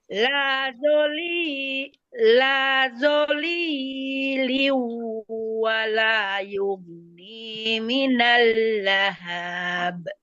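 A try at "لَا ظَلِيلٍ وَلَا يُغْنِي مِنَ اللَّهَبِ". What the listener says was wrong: Jangan dipanjangkan. Lahab, langsung. Lahab.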